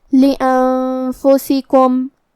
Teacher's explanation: یہاں حکم ہے اخفاء تو ہمیں یہ حکم کو غنہ کے ساتھ ادا کرنا ہے